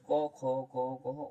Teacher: কণ্ঠ ব্যঞ্জনের উচ্চারণ স্থান হচ্ছে জিভের পিছনের অংশ